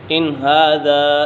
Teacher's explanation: نون ساکنہ تنوین کے بعد حروف حلقی میں سے کوئی بھی حرف آ جائے تو اظہار حلقی ہوگا، یعنی غنہ نہیں کریں گے، یہاں پر غنہ نہیں ہوگا۔